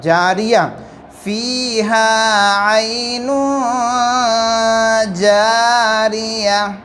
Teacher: رکنا ہو تو اسے ہم ہائے ساکینہ بنا دیں گے، یعنی تا کو ہٹا کر اس کی جگہ ہم ہا رکھ دیں گے